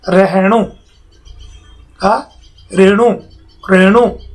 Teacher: मारवाड़ी में हकार का लोप होता है